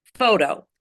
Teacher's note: The first syllable is the strongest syllable.